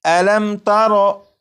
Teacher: ہے، یہ میم ساکن ہے، میم ساکن کے بعد تا ہے، جب میم ساکن کے بعد تا ہے تو اس میم ساکن میں غنہ نہیں کریں گے اور اسے پڑھیں گے علم تارو۔ اسی طرح یہاں پر بھی